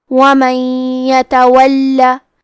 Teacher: یا حروف الادغام بغنہ میں سے ہے تو ہم نون ساکن کو یا میں ملا کے غنہ اور تشدید کے ساتھ یہ حکم کو ادا کریں گے